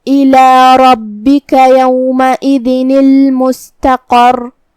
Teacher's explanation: قاف کو ہم بھاری آواز میں ادا کریں گے